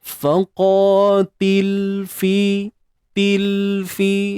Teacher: lam mati tu matikan macam biasa, jangan ada unsur beranak tu, tawallud kita panggil kan.